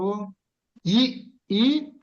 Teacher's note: ఇచచు యశానాం తాలు అంటే ఈ అక్షరాలన్నీ కూడా తాలు అంటే పాలెటల్ అంటాం అంటే అంగుడు అంటే పూర్తిగా పైన ఉండేవి కాకుండా ఈ చుట్టూ పైన ఉంటుందే